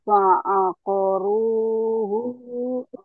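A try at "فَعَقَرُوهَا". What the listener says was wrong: Ha, bukan hu. Ulang. Fa'aqaruha. Fa'aqaruha.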